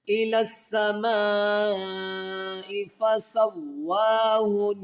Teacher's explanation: ثم استوى الى السماء، الى السماء کے یہ میم الف مد زبر ما، یہ 5 حرفی مد ہے، اس کو 5 الف کی مقدار کھینچ کر پڑھیں گے۔